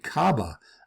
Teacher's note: Kaba ends in an ah sound with the R sound elided. But with the R, it becomes kabar, almost the same word as the Spanish acabar.